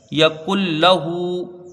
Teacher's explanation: اور نون ساکن کے بعد حروف یرملون کا لام ہے، تو یہاں ادغام بلا غنہ ہوگا، یعنی بغیر غنہ کے ادغام ہوگا، ادغام تام ہوگا، نون جو ہے وہ لام سے بالکل بدل جائے گا · کاف کو ڈائریکٹ لام سے ملا دیں گے